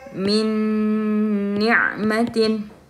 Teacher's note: Jadi semua suara nun ini sudah tidak kedengaran, tapi dia malah masuk ke suara huruf-huruf setelahnya, huruf-huruf idgham bi gunnah setelahnya.